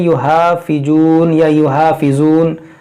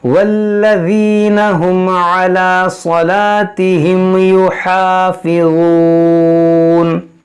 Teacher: اس ہا کو وسط حلق سے ادا کریں اور وا کو نرمی سے ادا کریں